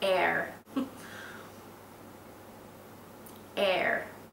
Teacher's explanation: I think it sounds better with an American accent with the strong R sound